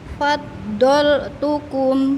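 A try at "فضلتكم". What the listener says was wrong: Baik, sudah benar tuh fathahnya. Tinggal ditahan Ibu biar ngalir.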